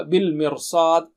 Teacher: صاد جو ہے موٹا اونچا ہے، اس کی تیاری میں، صاد کی تیاری میں را کو موٹا کر دیں گے